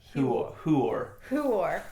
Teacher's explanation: it's actually who there's no Y sound in there